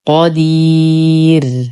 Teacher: ننتبه للراء وقفا، فهي مرققة لأنها سبقت بياء مادية. وعند الوقف لدينا مد عارض للسكون بمقدار 2 4 6 حركات، وحال الوصل هو طبيعي.